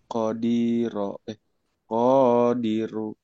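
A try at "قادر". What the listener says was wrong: Yang panjang dibaca pendek, pendek dibaca panjang. Qadiru.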